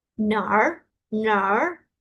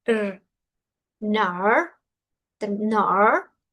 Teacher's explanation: Noten que mi R no es rrr. Recuerden que la R es la lengua hacia atrás y como que, puff, la doblo.